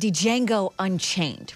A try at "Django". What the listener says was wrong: It's Django. The D is silent.